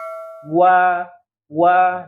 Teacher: kalau mereka ada penekanan ya itu untuk huruf w ya jadi saya ulanginya kedua bibir dan ketika kita melafalkan ada penekanan ya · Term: wau, huruf waw